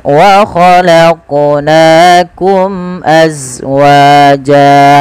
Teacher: Pantulkan lafal qaf karena dia qalqalah